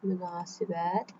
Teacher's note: Münasibətdə a uzun tələffüz olunur.